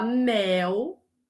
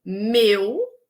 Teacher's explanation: E a diferença, se a gente escrever, a gente sabe que meu se escreve com U e que mel se escreve com L. Mas sonoramente, a diferença é na diferença entre vogal aberta e vogal fechada.